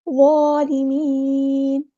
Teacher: نون کو ہم ساکن کر دیں گے وقف کرتے ہوئے اور مد عارض بھی ہوگی یہاں پر